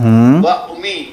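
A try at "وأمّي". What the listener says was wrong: و امی شد کے ساتھ نا, و امی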